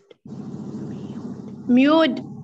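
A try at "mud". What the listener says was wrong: لا انطقها أ، مايو، ما ما مد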